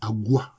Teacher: dans Agwa, le G est devenu allophone du K. Le G dans la langue baoulée a pris la place du K dans la langue Twi.